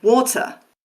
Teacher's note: There's no R there. There's absolutely no trace of that R sound.